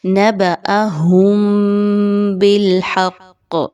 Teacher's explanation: میم ساکن کے بعد با کا حرف آ گیا ہے تو آپ یاد رکھیں کہ یہاں پر آپ نے غنہ کیے بغیر نہیں پڑھنا